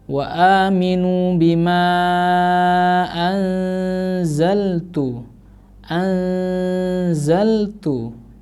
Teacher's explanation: nun sukun bertemu dengan za atau zai di situ cara membacanya pun juga sama. Ini termasuk contoh dari bacaan ikhfa ya. Jadi harus didengungkan cara membacanya.